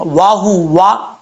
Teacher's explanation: واؤ کو پڑھتے وقت ہونٹ گول کریں گے، واؤ کے بعد ہا ہے، ہا کو بھاری ساؤنڈ کے ساتھ پڑھا جائے گا